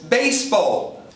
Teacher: Passou pro português chamando beiseball com s entre vogais fazendo z seguido de i, beiseball, mas em inglês baseball.